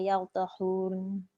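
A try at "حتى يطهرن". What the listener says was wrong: Ya, bunyi ra lebih sikit. Ya tahurn.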